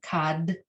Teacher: you give it the d sensation but you don't add any vowel sound to it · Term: true silent spa